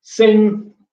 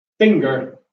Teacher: in English we have a rule whereby if you have a coda G after a nasal it is deleted so in sing it is deleted but in finger is not